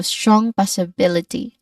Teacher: you are stressing strong and bill here while keeping the rest smooth and flowing.